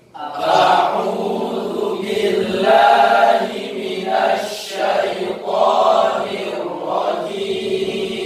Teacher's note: A'u perpindahan dari hamzah ke ain itu refleks, harus berbeda betul. Jangan ainnya berubah menjadi hamzah.